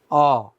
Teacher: ঠোঁট গোল হয় এবং ঠোঁট বেশি খোলে অচ্চারণ করে দেখো অ ঠোঁট অনেক বেশি খুলছে আবার ঠোঁট গোল হয়ে যাচ্ছে